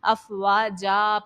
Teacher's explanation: یہاں پر ساکن والا قاعدہ نہیں ہے، دو زبر کی تنوین جب لاسٹ میں آئے اسٹاپ کرنے کی صورت میں الف سے بدلا جائے گا